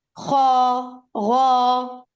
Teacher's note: So you see the back part of the tongue is raised, which means कि इन दो letters को हमने heavy पढ़ना है, खा, गा, ठीक है, like that.